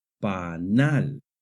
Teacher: It lets us know that we must raise our voice slightly when we get to that syllable. The word panal has the stress on the last syllable, panal. This follows the natural stress rules in Spanish, which say that if a word ends in a consonant other than N or S, the stress naturally falls on the last syllable, so no tilde is needed.